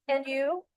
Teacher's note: Notice the rising intonation on and you.